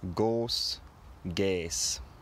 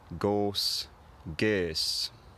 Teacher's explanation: In West Saxon, both short and long Ö became E very early on, losing the lip rounding. But in Northumbrian, the long Ö remained Ö and it kept its lip rounding